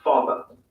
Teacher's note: Notice that the final R sound is not pronounced in British English. Father ends in a simple schwa vowel